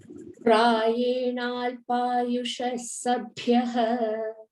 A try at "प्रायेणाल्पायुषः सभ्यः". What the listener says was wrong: Sabhyah only we can say. We can give visarga over there.